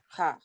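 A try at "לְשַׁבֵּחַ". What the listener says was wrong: Ach. Ach. You want to laugh. You want to go ha, ha, ha. Le, sha, be, ach. Ach. Okay, when you see that combination, you're always going to say the vowel first. Ach, ach.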